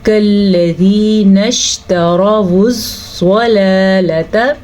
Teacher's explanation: را کو ہم پر پڑھیں گے کیونکہ را کے اوپر زبر ہے، جب بھی را کے اوپر زبر یا پیش ہوگی تو را پر پڑھی جائے گی، اور جب را کے نیچے زیر ہوگی تو را باریک پڑھی جائے گی، ٹھیک ہے۔